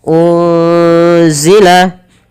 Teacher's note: ada nun sukun bertemu dengan huruf apa teman-teman Huruf Zai maka nunnya disamarkan kepada huruf z